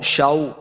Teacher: اس کو لمبا نہیں کریں گے، واو کے اوپر اپنے ہونٹ گول کرنے ہیں